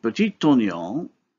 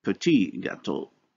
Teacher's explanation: Now, to avoid this complicated CCV pattern on the boundary between words, French resorts to the deletion of the final consonant in the first word so that we reach the basic CV structure. · Now, however, when the next word in each pair begins with a consonant, the first consonant in the word is dropped. The last consonant of the first word is dropped.